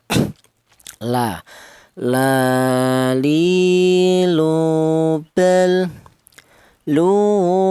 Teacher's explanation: huruf lam ini keluarnya huruf berasal dari ujung lidah menyentuh langit-langit mulut. Langit-langit mulut itu berada di atas lidah ya, langit-langit itu ya.